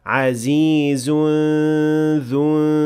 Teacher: And finally we have ikhfa with ghunna between aziz and dhu, but this time this ikhfa has an empty mouth ghunna, since the letter that comes after it is the dhal, and that is an empty mouth letter.